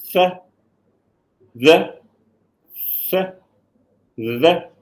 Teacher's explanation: I hope everybody can see that the tip of the tongue is in between the teeth.